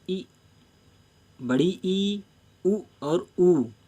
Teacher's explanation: जीभ मुंह की छत तक उठी रहती है, यानी जीभ जो है वो ऊपर की ओर उठी रहती है। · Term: सवृंत